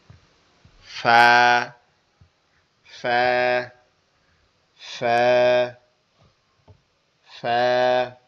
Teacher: ফাটা আমরা শিখি আমাদের নিচের ঠোঁটের পেট সামনের উপরের, ঠিক আছে, দুই দাঁতের আগার সঙ্গে লাগবে। নিচের ঠোঁটের পেট সামনের উপরের দুই দাঁতের আগার সঙ্গে লাগবে